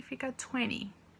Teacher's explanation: Você vai tirar o T e vai falar só o som do N. Então, do N pula pro Y, em vez de 20, fica 20.